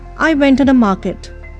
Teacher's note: it is assumed that it has a period because it is in a falling tone